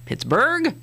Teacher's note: it's sort of a no accent on either syllable. Sort of equally accent both of those.